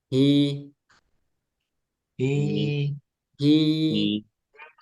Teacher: hi Billahi auzubillahi he ahah jangan He tapi hi hi gitu Ya jelas h-nya Hi ada aliran nafas Hi coba ikuti hi hi hi hiahi i ee tetap ee